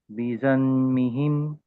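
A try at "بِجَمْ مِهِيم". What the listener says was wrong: జన్ ఎలా వస్తుంది? జమ్ రావాలి కదా, జమ్. బి యాక్చువల్గా యాజ్ ఇట్ ఈస్గా పలకండి, హిమ్ యాజ్ ఇట్ ఈస్గా పలకండి. మాత్రమే చేంజ్. మరి అంతకుముందు నూన్ శబ్దం ఎందుకు వచ్చింది? మనం రూల్ చదువుతున్నాం కదా, ఇది 5వ 6వ ఎగ్జాంపుల్ ఇది. కాబట్టి మీమ్ కనపడినప్పుడు దాని ముందు ఉన్న హరకాతును తీసుకుని వెళ్ళి మీమ్తో కలపాలి. నూన్ ఉన్నట్టు మర్చిపోవాలి.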